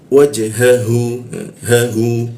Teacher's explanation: membaca huruf ha itu membutuhkan pernapasan di tenggorokan bagian bawah dia